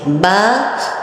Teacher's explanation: با خود ہی پتہ چل رہا ہے، ہونٹ کے جوڑنے سے ہو رہا ہے